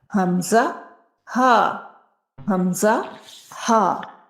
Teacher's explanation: ہا جو کہ حلق کے نیچے والے حصے سے ادا ہوتا ہے، جسے اقصی حلق کہا جاتا ہے، جہاں سے حمزہ بھی ادا ہوتا ہے